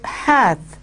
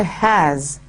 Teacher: So when he says "he that hath wife," you will remember that the TH has been replaced by the S. So the th sound has been replaced by the s sound.